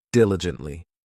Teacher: This adverb has 4 syllables, and the stress is on that first syllable